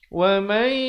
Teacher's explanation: Asalnya wa man, tapi bila bertemu ya jadi wa may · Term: idgham bi gunnah